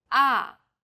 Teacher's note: The fourth tone falls sharply and quickly from a high pitch.